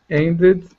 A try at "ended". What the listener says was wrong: No, you never say ed. And id, not and ed. Yeah, id. If you want to get the pronunciation down right, it's id. Watch my lips. If I say id, ed, id, ed, id, id, ed. Yes, but we're not supposed to.